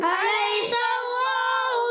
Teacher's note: سین باریک، سین کا مخرج ہے، بتا دیتا ہوں، سین کا مخرج زبان کی نوک اور دونوں دانتوں کے اندرونی کنارے سے